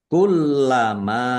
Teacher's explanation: lamnya dibaca dobel ada tasdidnya ditekan dan ditahan biar tampak dobelnya. Kullama mim fathah alif mad thobi'i.